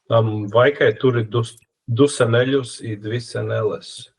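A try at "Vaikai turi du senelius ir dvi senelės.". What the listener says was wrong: Dvi senelės. The way you pronounce the L sounded so Latvian, but also Eastern Lithuanian, because they have a bit more solid, harder L as well.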